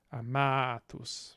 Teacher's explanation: So long second syllable, a long penultimate syllable, stress gets on the penultimate.